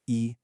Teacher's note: the first tone, which is high and flat